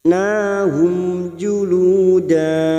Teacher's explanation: Sekarang mim sukun bertemu jim. Dibaca jelas tanpa mendengung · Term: Idhar safawi